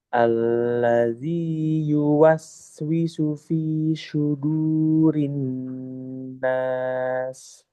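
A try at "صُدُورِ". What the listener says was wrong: Shotnya jangan ke shin ya, jangan berubah ke shin. Shu itu shin. Su sama dengan sin. Su itu sin, su shot.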